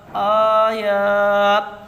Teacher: یا الف زبر یا، الف سے پہلے زبر ہے اس لیے یہاں یا مدہ ہوگا، یا مدہ کو ایک الف کے برابر کھینچ کر پڑھیں، معروف پڑھیں، مجہول آواز سے بچیں، جیسے یا الف زبر یا آیا۔